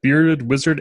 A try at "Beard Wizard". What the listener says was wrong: Hey, by the way, you read that exactly the way I did. It's not Bearded Wizard. It's Beard Wizard. It'd be Baird.